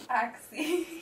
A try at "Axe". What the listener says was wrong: It's Axe. The E is silent. Yes, the E is silent.